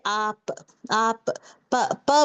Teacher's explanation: मेरे दो होठ जो है कनेक्ट हो के डिस्कनेक्ट हो रहे हैं। जो बंद है वो डिस्कनेक्ट हो रहे हैं।